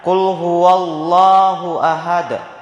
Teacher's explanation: dibaca tebal sehingga kedengaran bunyi loh. Dalam kaidah tajwid nama hukumnya adalah lafzul jalalah tabkim, yaitu lafaz Allah yang dibaca tebal. · dibaca pantul dengan berat, dikarenakan adanya qalqalah. Huruf qalqalah salah satunya yaitu huruf dal yang berada di akhir waqaf, maka cara membacanya dibaca pantul dengan berat.